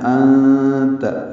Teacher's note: انت میں نون ساکن کے بعد تا آنے کی وجہ سے اخفا ہو رہا ہے